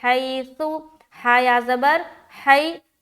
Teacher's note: آگے چلیں گے، حیث، ہا یا زبر حی، نرمی کے ساتھ جلد ادا کر رہے کیونکہ یہ لین کا قاعدہ ہو رہا ہے